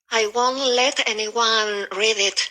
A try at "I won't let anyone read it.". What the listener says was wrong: A bit stronger with the T and won't.